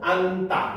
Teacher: 니은 지읒 받침인데 지읒이 탈락하고 앉다 이렇게 되는 거죠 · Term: 자음군 단순화